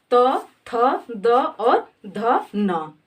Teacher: चौथा हमारा वर्ग है त वर्ग। त वर्ग का उच्चारण स्थान क्या है, दंत।